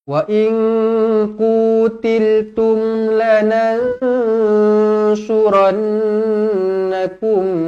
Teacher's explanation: Nun kosong bertemu dengan Shad pun sama juga dengung dua harakat ikhfa Hakiki